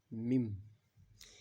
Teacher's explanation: یہاں پہ اقلاب ہوگا میم سے بدل کر اخفا کریں گے